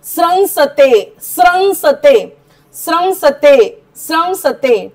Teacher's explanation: अनुस्वाराचा म उच्चार करायचा कारण पुढे आहे स